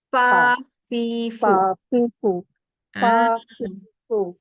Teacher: Gigi atas menyentuh bibir bawah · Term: huruf Fa